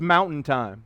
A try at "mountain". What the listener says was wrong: Mountain. Mountain He's got mountain has like 5 vowels in it. He's pronouncing like 2. Mountain. MTN. Mountain.